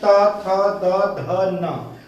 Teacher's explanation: तो इस तरह से जो त वर्ग है, ये त वर्ग के जितने भी अक्षर है ये सारे वर्ण त, थ, द, ध, न, ये पांच के पांचों का उच्चारण स्थान दंत है।